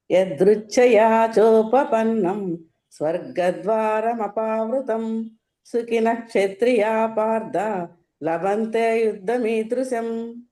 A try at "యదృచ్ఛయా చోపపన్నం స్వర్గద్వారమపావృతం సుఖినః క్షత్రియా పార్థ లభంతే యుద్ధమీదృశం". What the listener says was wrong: Okay బాగుంది.